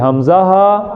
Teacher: حمزہ ہا ادا ہوتا ہے گلے کے ابتدائی حصے سے